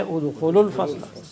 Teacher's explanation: We will drop the waw because of iltiqa sakinain.